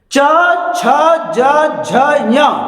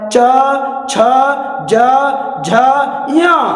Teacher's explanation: च, छ, ज, झ, ञ ये तालव्य ध्वनि होती है। जीभ का मध्य सिरा ऊपर जाकर तालू को टच करता है।